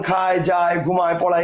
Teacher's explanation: আ আর এ দুইটা মিলে হচ্ছে আয়, আ আর এ দুইটা মিলে আয়, যেমন খায়, যায়, ঘুমায়, পড়ায় ইত্যাদি। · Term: যৌগিক স্বর ধ্বনি